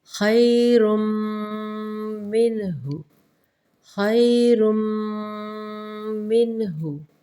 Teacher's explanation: را پہ تنوین ہے تو ہم نے رن نہیں کیا بلکہ رن کو میم کے اندر مدغم کر دیا ہے